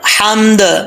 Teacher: ہا بریک ہے، اس کا تعلق حلق سے ہے